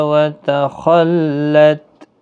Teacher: خا حروف مستعلیہ ہے، پر پڑھنا ہے